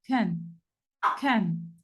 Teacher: Es el único sonido en inglés que tiene nombre, se llama schwa. Este sonido de schwa se dice así como una E que sale detrás de su garganta.